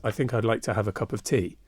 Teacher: It has 10 syllables, unstressed followed by stressed. It's actually more perfect as a piece of iambic pentameter than many of the lines in Shakespeare's plays.